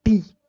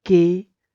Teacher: like the tongue is actually crucial is articulating different sound such as the different between like if I say the word t, tip of the tongue, t, and k, back of the tongue